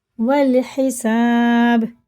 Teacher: الف پڑھا نہیں جائے گا، واو لگے گا سیدھا لام میں